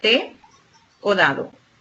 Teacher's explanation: Fonemas consonánticos pueden ser dentales, en los cuales los órganos que intervienen en la producción del sonido son la lengua detrás de los dientes superiores